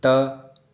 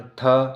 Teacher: त अघोष अल्प प्राण, थ अघोष महाप्राण